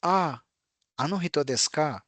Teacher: Ah is the falling intonation as I just said.